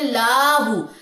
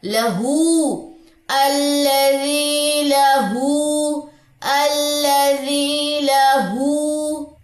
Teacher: ہا کے اوپر الٹا پیش 2 کاؤنٹس لمبا کریں، لیکن لام کی زبر لمبی نہیں کرنی